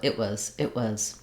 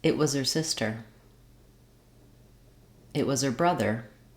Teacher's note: So it was, it was. I'm stopping the air for the it, but releasing on the w of was. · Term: unreleased